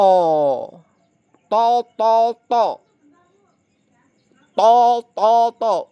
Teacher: To th to. Ujung lidah menempel gusi atas bagian dalam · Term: huruf th